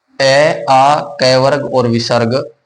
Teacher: वायु सीधा कंठ से निकलती है